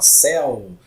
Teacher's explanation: O ditongo aberto, essa vogal semivogal dentro da palavra, ela é pronunciada com a boca aberta, por isso é chamado de ditongo aberto